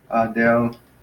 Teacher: The accent is on the last syllable, so it's adelphos.